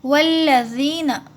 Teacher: یہاں جو الف ہے وہ سائلنٹ ہے، واو کو لام میں ملائیں گے